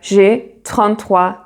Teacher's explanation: you do a linking sound and the s sounds like a z